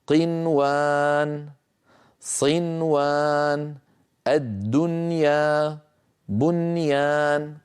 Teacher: نعم، هذه الكلمات ال4 لا بد من إظهار النون عندها، هكذا كانت تفعل العرب، ولم تكن تدغم النون في الواو ولا في الياء إن كانت النون وحرف الإدغام في كلمة واحدة · لا تدغم النون الساكنة في الواو أو الياء إذا اجتمعا في كلمة واحدة، وذلك في قنوان، صنوان، الدنيا، بنيان.